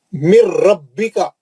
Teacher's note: نون ساکن کا ادغام بلا غنہ حرف را